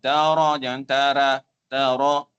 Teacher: Ra dibaca dengan tafkhim tebal.